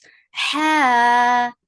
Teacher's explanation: ha from middle part of your throat